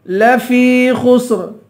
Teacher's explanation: خا کو پر پڑھیں گے، آخر میں را ہے، اس را کو باریک پڑھیں گے